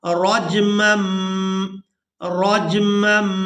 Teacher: تنوین میں جو نون کی آواز ہوتی ہے اسے ہم نے میم کے ساتھ بدل دینا ہے۔